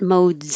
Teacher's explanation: it looks like an S in modes, but it sounds like a Z. So remember the last sound in the word, not the silent E, is mode, is a D.